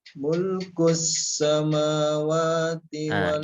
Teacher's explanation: Jadi sin sukun pada as-samawat durasinya itu mengalir sempurna.